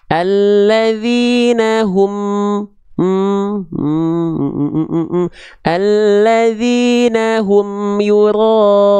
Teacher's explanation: menjelaskan mim sukun dari bibir, alias nggak dibaca samar. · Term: idhar syafawi